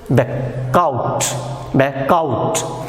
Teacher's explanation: So instead of vowel, when the back and out will come together, this k will go towards the next word and it will be pronounced as back, out